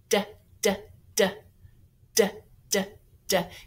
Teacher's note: And D, remember that D is a tip-tapper, so you'll need to put your tongue on the magic spot. That's right behind your front teeth, way up there.